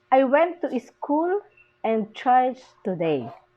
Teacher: Today is the falling intonation. That's why we call this rise and fall intonation.